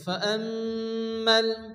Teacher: মিমের উপরে তাসদীদ মিম গুন্না ওয়াজিব এক আলিফ গুন্না করতে হবে